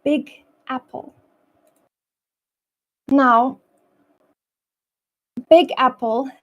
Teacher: the G in big flows into the a in Apple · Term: linking sounds